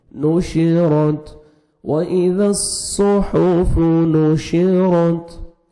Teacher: را کو موٹا کر کے پڑھیں گے اور تا کا ہلکا سا ساؤنڈ آئے گا، آلریڈی ساکن ہے۔